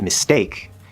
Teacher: if you listen really closely, with mistake, it almost sounds like it's a D sound, kind of. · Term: soft T sound